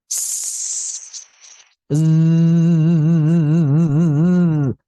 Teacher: Jika bunyinya zai, pita suara akan bergetar. Dosa adalah ham, sedangkan zai adalah jahr .